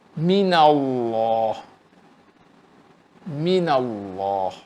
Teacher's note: Wajib dibaca tafkhim. Apabila huruf sebelumnya berbaris di atas.